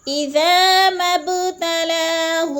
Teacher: میم کو با کے ساتھ جب ملائیں گے تو با پر قلقلہ کریں گے، کیونکہ با حرف قلقلہ میں سے ہے اور ساکن ہے، تو اسی لیے یہاں پہ قلقلہ کریں گے، یعنی با پر۔